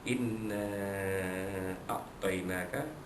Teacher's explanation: nun alif di atasnya bertemu dengan hamzah pada a'tainaka, hukumnya ialah mad jaiz munfasil. Harus dibaca pada kadar 4 atau 5 harakat panjangnya.